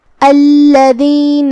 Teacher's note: کلمت الذین میں یہاں بھی لام پہ تشدید ہے تو 2 حرف کے برابر ہمیں لام کو پڑھنا ہے. دال کو ہم زبان کے سر اور اوپر والے دانتوں کے اندرونی کناروں سے ادا کریں گے. آخری میں نون پہ زبر ہے لہذا اس کا دھیان رہے.